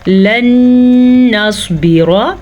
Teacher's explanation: ادغام بالغنہ آپس میں ملانا ہے اور غنے کے ساتھ ملانا ہے،